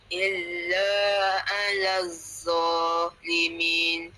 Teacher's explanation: Lam nak masuk huruf dad dia kena apa? Tebal sikit pada za tu.